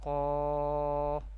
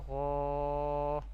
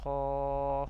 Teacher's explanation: If alif comes after heavy tone letters, these are heavy tone letters, then alif also will be pronounced with heavy voice in an Arabic accent.